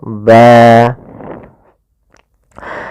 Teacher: kita wakaf di akhir bacaan kita misalkan ban maka berubah menjadi panjang ba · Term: mad iwad